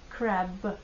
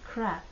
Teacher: конечно в русском языке буква Б на конце звучит как п в английском б звучит как б crab если оглушить б на конце то получится слово crap